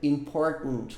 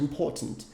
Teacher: Esse T aqui é engolido lá no fundo da garganta. Important. Como se fosse um golpe de glote que você dá aqui.